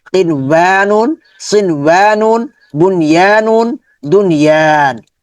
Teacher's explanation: নুন কিন ওয়ানুন গুণনা হবে না, সিন ওয়ানুন গুণনা হবে না, বুনয়ানুন গুণনা হবে না